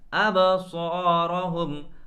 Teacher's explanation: با میں ہم قلقلہ کریں گے اور صاد کو موٹا کریں گے۔